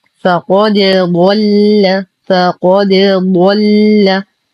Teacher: نقلقل الدال كي لا تدخل في الضاد · لا نفخم الدال عند مجاورته للضاد فلا نقول فقد ضل.